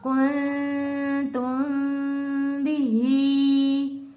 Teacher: मीम साकिन के फौरन बाद जब हर्फ बा आता है तो मीम साकिन को बा में बदल कर गुन्ना करते हुए पढ़ते हैं।